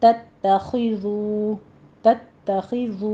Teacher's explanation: تا باریک ہے، تشدید ادا کیجئے، آگے خو کو پر کرنا ہے، تتخذو تتخذو، ذو کو تھوڑا ہونٹوں کو گول کر کے 2 کاؤنٹ کر لیجئے، 2 حرکتوں برابر کھینچنا ہے۔